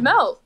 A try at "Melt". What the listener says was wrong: No, say it right. Pronounce the T at the end.